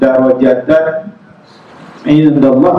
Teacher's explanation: Izhar jadi dibunyikan nun pada tanwin darajatan 'indallah tanpa ada dengung.